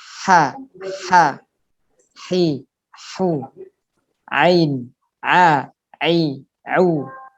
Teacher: Itu yang tenggorokan bagian tengah adalah ha dan ain.